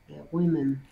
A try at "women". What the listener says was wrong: Nice pronunciation.